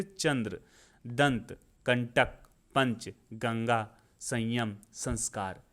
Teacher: जिसमें नाक से अधिक, मुख से कम वायु निकलती है उसको अनुस्वार बोलते हैं।